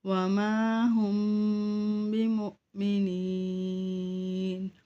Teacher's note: میم ساکن ہو اس کے بعد با آئے تو یہاں پہ ہم غنہ کرتے ہیں